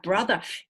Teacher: ER in Australian, New Zealand English at the end of words usually sounds like a schwa